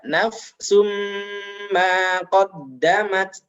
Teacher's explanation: tanwin bertemu mim didengungkan juga